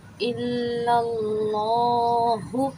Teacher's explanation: اور لا کو اس لیے کھینچا کہ یہاں پہ کھڑا زبر ہے، اسے ہم نے ایک الف کی مقدار کھینچنا ہے۔